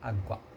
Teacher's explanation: O U quase que não se ouve. Apesar da sílaba tônica ser água. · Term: ditongo crescente